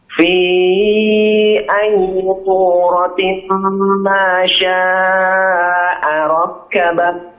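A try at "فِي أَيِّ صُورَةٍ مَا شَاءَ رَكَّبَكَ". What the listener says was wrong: Ulangi lagi. Jangan masuk hidung ya. Hati-hati ya. Jangan suratim. Fi ayyi surati. Jangan masuk hidung.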